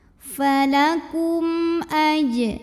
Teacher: Karena mim sukunnya menghadapi huruf selain mim dan ba, yaitu huruf hamzah. Maka mim sukun ini kita bunyikan dengan izhar atau jelas bunyi M-nya. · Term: izhar syafawi